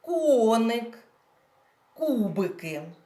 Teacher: наголос в цих назвах іграшок падає на перший склад